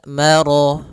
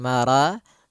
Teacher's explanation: rnya tebal Maro bukan Mara